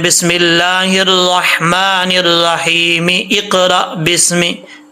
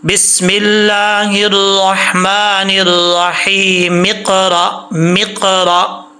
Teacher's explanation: ये जो सबसे पहले हमज़ा आ रहा है, हमज़ा के नीचे ज़ेर है, हमज़ा को गिरा देंगे